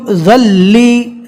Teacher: ذال کو ڈائریکٹ لام سے ملائیں گے اس لیے کہ تشدید والے حرف سے پہلے جزم والا حرف ہو تو جزم والے حرف کو چھوڑ دیں گے۔